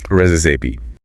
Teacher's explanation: The pronunciation is resi stress on the first syllable